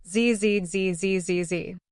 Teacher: roof of your mouth just behind your teeth without touching them push air out while making a buzzing sound with your vocal cords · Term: z sound